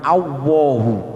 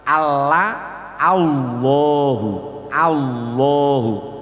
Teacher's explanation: lidahnya ditempelkan pada gusi seperti lam tarkik